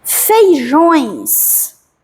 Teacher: O é uma vogal aqui e o e é uma semivogal. Então nós temos um ditongo nasal e um ditongo decrescente.